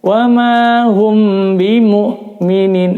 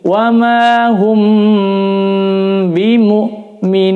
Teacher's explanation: mim sukun bertemu ba hukumnya adalah ikhfa syafawi. Ikhfa syafawi bacanya ditahan 4 ketukan. Jadi ditahan dulu di sini.